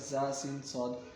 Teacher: ان 3 حروف زا سین صاد کو ادا کرتے وقت سیٹی کی طرح تیز آواز نکلتی ہے، اس لیے ان حروف کو حروف صفیریہ یعنی سیٹی والے حروف بھی کہتے ہیں.